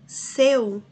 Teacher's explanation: Primeiro eu tenho a vogal e depois a semivogal. O decrescente é do maior para o menor, do mais forte para o mais fraco, né?